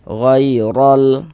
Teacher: Maka huruf ya sukunnya adalah huruf lin. Nah, maka kita baca luna lembut. · Ghairal, huruf ro memiliki harokat fathah nih, tanda baca fathah, maka ini huruf ro dibaca tafkhim, dibaca tebal, sehingga dengan menaikkan pangkal lidah kita ketika kita mengucapkannya